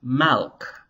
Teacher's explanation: So melech was apparently originally malk, with a short A after the mem. Later, malk was transformed into malek, and then eventually into melech.